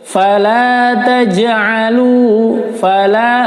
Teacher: la-nya dibaca panjang, fathah diikut alif. Taj, qalqalah sughra dipantulkan, taj bukan taj.